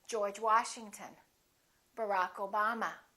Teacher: the same thing happens when we stress the names of people we stressed the last name the second word